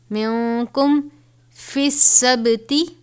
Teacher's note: نون ساکن ہے، اس کے بعد حروف اخفا میں سے کاف ہے تو اخفا کریں گے